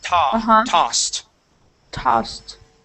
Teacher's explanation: the s in this word is unvoiced